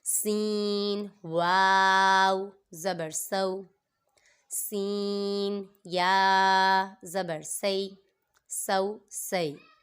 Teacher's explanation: سین بھی حروف صفیریہ میں سے ہے، اس میں بھی سیٹی کو ہم ظاہر کریں گے